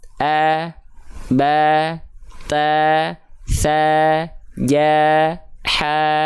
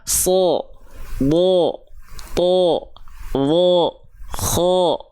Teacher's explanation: ketika fathah kedengarannya bukan A tapi O dia adalah huruf yang sedang dibaca dengan keadaan yang tebal